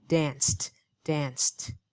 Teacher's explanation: the T sound is voiceless. It means we don't use our vocal cords.